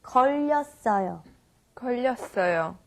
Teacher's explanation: when we say 걸렸어요, we have the 받침 르, and you carry it over to the next syllable